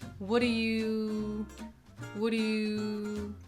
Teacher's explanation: The word do just becomes d', d'.